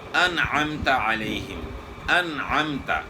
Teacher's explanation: ان 6 حروف میں سے کوئی بھی حرف آ جائے تو وہاں اظہار ہوگا، یعنی غنہ نہیں ہوگا، یعنی ناک میں جو ہے آواز لے کر جانا ایک الف کی مقدار کے برابر یہ نہیں ہوگا۔ اظہار کا مطلب ہے کلیئر کر کے پڑھنا، واضح کر کے پڑھنا۔